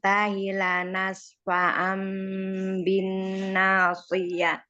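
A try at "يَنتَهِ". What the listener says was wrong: Yang tahinya haknya jangan hilang. Emang dia suka ya, soalnya kan dia di bawah kadang-kadang suka hilang. Ya tahi.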